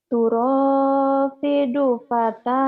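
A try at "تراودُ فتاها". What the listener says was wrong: Turawidu bukan turapidu ya. Turawidu. Turawidu. Turawidu ya. Turawidu fataha. Turawidu fataha.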